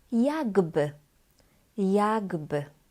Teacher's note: Here we have voiceless k, k, and voiced b.